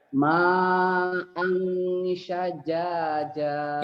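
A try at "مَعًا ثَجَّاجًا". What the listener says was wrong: Ini bukan sin ya, sa. Lidahnya kayak digigit. Ma'a sajjaja.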